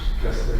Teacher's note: Dans ce texte, cette palatalisation n'est pas attestée parce que le manque de palatalisation, c'est un trait typique de l'anglais, de l'anglo-normand